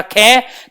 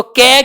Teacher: क के अंदर हम वास्तव में कम वायु निकाल रहे हैं। क हाथ लगा के देखो और उसके बाद ख का उच्चारण करो।